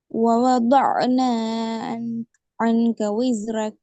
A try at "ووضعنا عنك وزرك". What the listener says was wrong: அந்த ஒரு தான் பிழைன்னு சொல்றான். அப்படின்னா ஐன் படிக்கலன்னு அர்த்தம். சரியா?